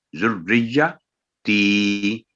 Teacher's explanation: آگے ہے ذریتی، ذریتی نہیں ہے یہ، ذریتی یعنی ذریہ، یہاں بھی غلطی ہوتی ہے، پھر تی کو شارٹ کر دیا جاتا ہے، تو یہ ہے ذریتی، تی کی آواز 2 سیکنڈ لمبی ہوگی